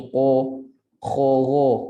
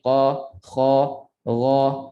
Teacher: qaf, kha dan ghain, 3 huruf ini tebal tetapi dia terbuka. Dia tak boleh bunyi qa, kha, gha.